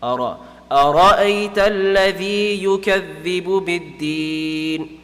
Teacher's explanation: the ra is going to be full mouth because mutaharrik has a fatha on top. So it's going to be pronounced full mouth.